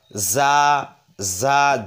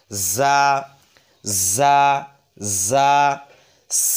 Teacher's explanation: জা হরফটা উচ্চারণ হবে জিহ্বার আগা সামনের নিচে দুই দাঁতের পেটের সঙ্গে, অর্থাৎ জিহ্বার আগাটা সামনের নিচে দুই দাঁতের পেটের সঙ্গে লেগে, এটা মাঝ বরাবর লেগে এইভাবে জা, জা ঝিরঝির আওয়াজে জা, জা, জা।